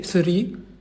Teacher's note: Le TH, la langue, il va toucher bien évidemment les incisives, mais il va dépasser un peu le TH. Il va toucher th.